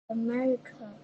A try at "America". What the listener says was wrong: Yes. Okay, very good.